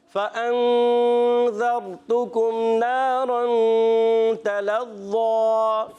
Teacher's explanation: تلظ تا کو باریک پڑھیں گے اور تلظ لام کو ہی باریک، مگر ظ جو ہے یہ ہے ایکسٹرا موٹے حروف میں سے، اس کو پڑھیں گے موٹا